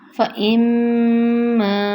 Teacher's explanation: اس میں الف آ رہا ہے. فَإِمَّا دو حرکت لمبا ہوگا